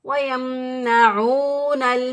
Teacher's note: واو ساکن سے پہلے والے حرف پر پیش، تو ایک الف کے برابر اس کو لمبا کریں گے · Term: واو مدہ